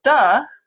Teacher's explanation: it's the same thing as T except that the voice the vocal folds is going so we've got a voiced alv pive with vocal fold vibration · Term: voiced alveolar plosive